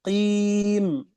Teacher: Huruf qaf dari hanak a'la keluar.